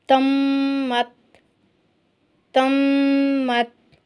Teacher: میم پر دو حرکت تک غنہ کیا، ناک سے آواز نکالیے